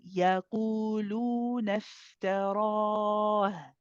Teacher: the time that we spend on the qu and the time that we spend on lu should be equal. Okay, so one is not shorter than the other.